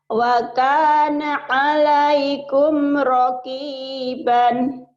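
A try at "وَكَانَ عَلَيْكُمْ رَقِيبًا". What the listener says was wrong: Jangan waqana, biasa aja. Wa kana 'alaikum raqiban. Diulang lagi.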